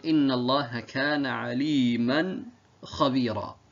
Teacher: As you can see here, عَلِيمًا, when I pronounced it, you heard a noon at the end, right? At the end of Aliman, you heard a noon sakin at the end. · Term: tanween